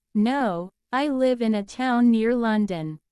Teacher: Imagine someone asks, "Do you live far from London?" And the reply is, "No, I live in a town near London." The stress on near tells you the speaker is correcting the assumption.